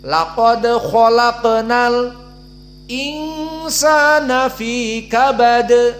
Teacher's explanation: dibaca alif lam kemudian berhenti sebentar, beberapa detik, dilanjutkan dengan hamzah dibaca · Sakt maknanya berhenti sejenak. Di saat membaca al-insan berhenti pada al, dan hamzahnya insan dibaca setelah berhenti beberapa detik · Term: as-sakt